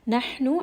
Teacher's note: Ha is going to be from the middle of the throat.